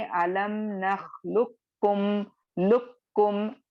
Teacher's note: कॉफ की आवाज खत्म हो जाएगी, डायरेक्टली आपको कॉफ को काफ में मर्ज कर देना है, जिसकी वजह से पढ़ते वक्त आपको सिर्फ काफ की आवाज सुनाई देगी, ठीक है। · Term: इदगाम मुतक़ारिबैन